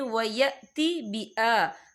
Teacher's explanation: حمزہ کے پر کھڑی حرکات ہے تو ہم 2 یا 3 عدد کے برابر کھینچ کے پڑھیں گے